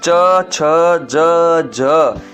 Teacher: ये सब तालु से बोले जाते हैं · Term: तालव्य